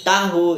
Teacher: ha merupakan kontoid fricative faringal dan tidak bersuara